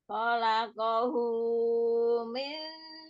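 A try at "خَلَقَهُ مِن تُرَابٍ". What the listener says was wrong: kepanjangan, hu-nya 2 aja. 2 harokat.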